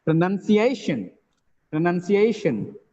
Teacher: The last syllable is shun, the preceding syllable is A. A is stressed here. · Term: primary stress